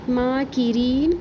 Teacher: کاف کے نیچے زیر اور اس کے بعد یا مدہ کو بھی ایک الف برابر پڑھیں گے